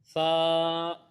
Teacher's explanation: है अगला हर्फ है सा इसको रूफे लि सविया कहते हैं यह जुबान का सिरा और ऊपर के दांतों के अंदर किनारे से अदा होगा